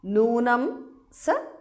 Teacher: Noonam saha visarga is dropped because of sandhi